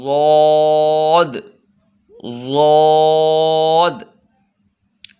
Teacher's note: ज़ुबान की जो साइड वाला हिस्सा है वो दाढ़ के साथ टच होगा तो ज़ौद अदा होगा।